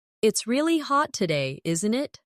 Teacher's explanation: Notice how isn't it can sound like in it in very casual British English.